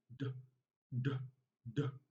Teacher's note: Okay, now it is called alveolar because when you pronounce the sound, the tongue makes contact with the alveolar ridge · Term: voiced alveolar plosive